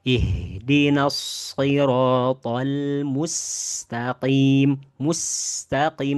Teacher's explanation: huruf sin dan huruf zai ini adalah huruf yang terkategori tipis sehingga bacaannya tidak boleh di tebalkan